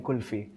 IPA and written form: kʊlfiː (Kulfi)